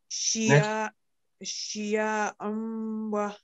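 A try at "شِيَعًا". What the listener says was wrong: Yeah, should not be prolonged. Wa. wa.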